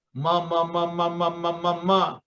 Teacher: jenis huruf yang pengucapannya menggunakan dua bibir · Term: bilabial